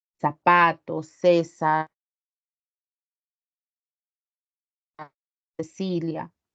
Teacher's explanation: Y nosotros no lo utilizamos, nosotros tenemos ceseo. Quiere decir que pronunciamos igual tanto la S, la Z o la C